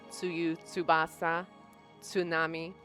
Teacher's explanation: stop fricative said really really closely together